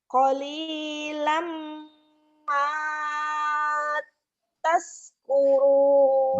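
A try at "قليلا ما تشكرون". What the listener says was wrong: Bagus, tinggal sinnya aja. Tash. Shh. Qalilam ma tashkurun. Qalilam ma tashkurun.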